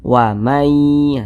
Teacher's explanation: bunyi nun sukun dimasukkan ke huruf ya Sehingga dibaca wamai seperti itu kemudian diunahkan atau didengungkan jadi suaranya